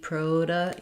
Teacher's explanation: We can flap that T. Proda in American English. Prod. This E is awah sound.